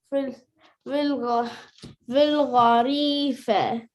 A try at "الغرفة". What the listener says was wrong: Doesn't say غريفة. why you don't read any vowels? This is غين ضمة. غين ضمة does غو. This is را سكون. غين ضمة را سكون is غر. فا فتحة is فا. تا كسرة is تي.